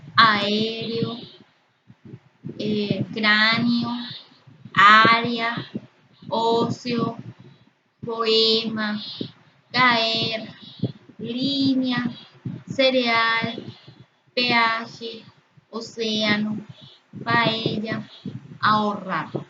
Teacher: tenemos los hiatos que están formados por la unión de dos vocales abiertas